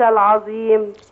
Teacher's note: نخلي بالنا من الظاء طرف اللسان يطلع فيها